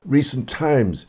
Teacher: But the king actually pronounces it like the familiar symbol, I, beginning with a more front quality